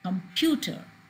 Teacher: Pew is louder than any other syllable. It has a change of in pitch from the syllables coming before and afterwards.